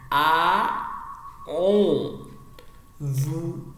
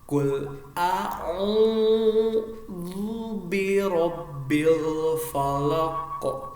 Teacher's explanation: Ini ada alif di rongga mulut dan ain di tengah tenggorokan.